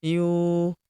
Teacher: Huruf yu kita panjangkan. dua harakat karena terdapat wau sukun di depannya